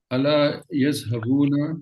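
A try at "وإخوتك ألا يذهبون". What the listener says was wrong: ये एक वर्ड नहीं है अला, थोड़ा सा गैप, तो ताकि आपको रजिस्टर हो जाए कि ये अला एक एक लफ्ज आपका दिमाग है ना पक्का कर लेगा कि ये एक वर्ड है।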